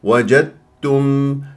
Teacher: متجانسين لان الدال والتاء من نفس المخرج اختلفوا في الصفات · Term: ادغام متجانسين